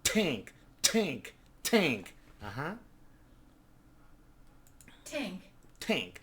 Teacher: Notice that the American English has more like a puff of air.